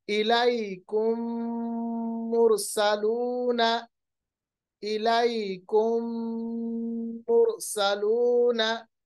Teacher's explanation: यानी मीम की आवाज को मीम में मिला देते हैं। · मिल जाने के बाद जो गुन्ना है, यानी मीम की जो आवाज नाक में चली जाती है, वो नाक में बहुत देर तक, यानी 2-3 सेकंड तक रहती है, जिसको हम इदगाम कहते हैं।